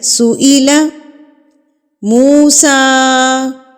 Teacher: کھڑی زبر کو آپ نے ایک حرکت کے برابر کھینچنا ہے